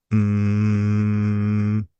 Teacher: It's a sound produced by a flow of air going through the nose. For instance, M is a nasal consonant.